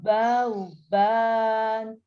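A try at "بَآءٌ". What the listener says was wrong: Bau. Tanwin dengan wau masuk. Ke waunya. Ini meskipun tidak ada tasdidnya, tapi harus masuk. Bau.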